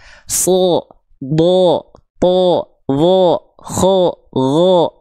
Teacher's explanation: Kalau dia seperti vokal O, maka dia huruf yang tebal, maka tebalkan pelafalannya. Contoh yang tebal, sho, Do, tho, do, kho, gho, d, dan yang lainnya.